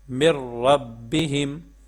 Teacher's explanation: اب جب ہم یہاں پر میم کو را کے ساتھ ملائیں گے تو یہاں پہ ہم غنہ نہیں کریں گے، بغیر غنے کے پڑھیں گے۔ را اور لام میں بغیر غنے کے پڑھا جاتا ہے، جیسے یہ دیکھیں مر ربہم، اب یہاں پہ ہم غنہ نہیں کریں گے، ٹھیک ہے۔